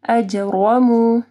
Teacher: جیم کے اوپر کلکلہ ہوگا اور رو موٹی پڑی جائے گی. اجرمو، اب یہاں پہ دیکھیں میم کے اوپر پیش ہے، واو مدیہ مو، اگر صرف پیش ہوگی تو اجرمو، لیکن اجرمو.